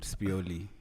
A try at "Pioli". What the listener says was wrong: It's just Pioli. Pioli, yeah. You figured he's Italian. Just put an S in front of it.